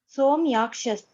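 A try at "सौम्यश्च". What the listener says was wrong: No. No. Saumyascha only, not Saumyaschascha.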